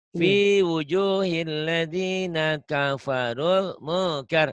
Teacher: Jadi pendek karena ketemu Alif Lam Qomariyah